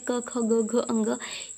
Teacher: क वर्ग में जितने अक्षर आते हैं क ख ग घ अंग यह भी कंठ से ही होते हैं